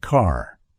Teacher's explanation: the American accent often uses a strong R sound